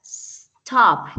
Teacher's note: dice que es consonante vocal consonante pero que la fuerza está al final de la palabra stop